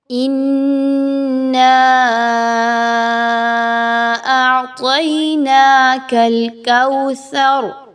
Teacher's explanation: اِنَّا أَعْطَيْنَاكَ الْكَوْثَرَ، اس میں دیکھیے تو نون مشدد آ گیا، حمزہ اور نون کو آپس میں ملاتے ہوئے غنہ کریں گے، آواز کو ناک میں لے کے جائیں گے، اور مد آ گیا حمزہ پر تو آپ نے اس مد کو کھینچ کے لمبا کر کے پڑھنا ہے، مقدار کو کم نہیں رکھنا۔